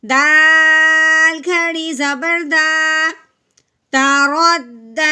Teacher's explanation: رو دال زبر رد، تارد. ٹھیک ہے، دال کے اوپر کھڑی زبر ہے، اب ہم نے اس کو 1 الف کے برابر لمبا کرنا ہے